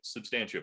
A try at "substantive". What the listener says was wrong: Substantive. You're putting the emphasis on the wrong part of the word, which is Yeah, emphasis.